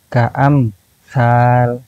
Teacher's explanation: memberikan jeda antara mim dengan huruf berikutnya